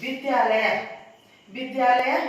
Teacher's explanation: आ और आ मिलकर के आ हुए हैं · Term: संधि